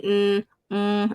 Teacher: itu bunyi sengau memang bunyi dia sengau memang keluar angin ke hidung